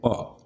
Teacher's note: प इसका ओष्ठ स्थान है और स्पष्ट प्रयत्न दोनों होठों को मिलाकर बोलना